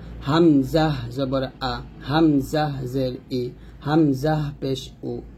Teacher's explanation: হামজাট কন্ঠের শুরু থেকে আমরা উচ্চারণ করব